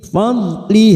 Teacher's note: hati-hati huruf wad bukan qalqalah jangan dipantulkan , kita tahan fadli karena kita wakaf di sini maka kita